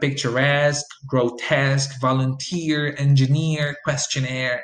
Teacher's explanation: they are three syllable words which received the stress on the third syllable